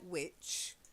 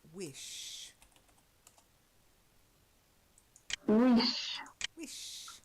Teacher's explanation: You've got to get the softer sh sound rather than the ch.